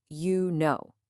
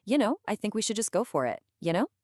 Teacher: It's fast, and the words just kind of blend together. It sounds more like, ya know. And the tone is usually pretty flat. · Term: blended sound